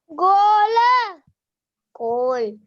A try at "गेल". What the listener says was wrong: गो नहीं बेटा, गे है, गेल। गेल कोई शब्द नहीं है। गेल कोई शब्द नहीं बेटा।